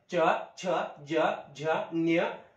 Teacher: तालव्य हे कठोर तालू द्वारे ह्या वर्णांची उच्चारण होते